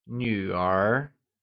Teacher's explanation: It is pronounced using the falling rising tone